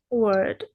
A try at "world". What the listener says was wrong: Okay, how about the L, world, world.